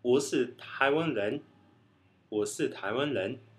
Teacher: E o R, que é o som mais diferente do mandarim, que é o J, J, entre o R e o J. Na China se faz esse J, e em Taiwan, às vezes, ele é trocado totalmente pelo L.